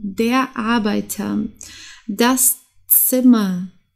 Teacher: hier hast du auch ein Vokal und dann das R und deswegen wird das R wie ein A ausgesprochen